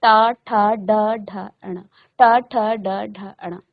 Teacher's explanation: तो ट वर्ग क्या होता है, मूर्धन्य, मूर्धन्य यानी मूर्धा आपके मुख के अंदर एक स्थान है जिसको आप मूर्धा कहते हैं। उस मूर्धा स्थान को आपकी जीभ क्या करती है, स्पर्श करती है।